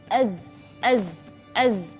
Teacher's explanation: Di antara sifat huruf za adalah sifat jahar, di mana arti jahar itu adalah nafas yang ditahan. Berarti ketika kita melafalkan huruf za, az.